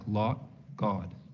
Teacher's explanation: it's going to be a little bit lip-rounded in a Boston accent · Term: lot vowel